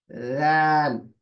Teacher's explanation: जबान की जो आपकी नोक है ऊपर के दांतों के किनारों को लगेगी, सिर्फ दो दांत। थोड़ी सी जबान बाहर आएगी आपकी। दाल, पीछे से जबान नीचे ही रहेगी।